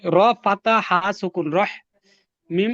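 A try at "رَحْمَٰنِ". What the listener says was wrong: ফাতা, আপনার ফাতা শব্দটা হয় না কেন? ফাতা পাতা কয়েক কি, পাতা কি, ফাতা তো কিছু নেই, ফাত হা, ফাত হা, রা ফাতহা হা সুকুন রাহ।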